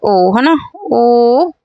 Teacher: कंठ ओष्ठ हो जाएगा। कंठ ओष्ठ हो जाएगा। क्योंकि ओठ भी लड़ रहे हैं और कंठ से भी आवाज आ रही है।